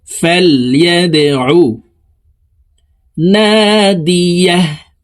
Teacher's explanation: দাল কলকলার হরফ নিচের দিকে ধাবিত করে ধাক্কা দিয়ে উচ্চারণ করব